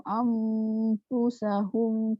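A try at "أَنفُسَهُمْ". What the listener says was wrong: Yang Nur Mati jumpa Fa nipis dia tak tebal. Fu. Kan gigi kena bibir kan. Pergerakan tu ke arah itulah. Fu. Yang tu dia tak tebal.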